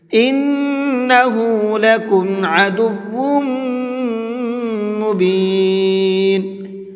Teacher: انہ نون کے اوپر تشدید ہے تو یہاں پر غنہ کریں گے۔